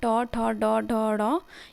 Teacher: जीभ की जो अग्र भाग होता है वो मुड़ जाता है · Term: मूर्धन्य ध्वनि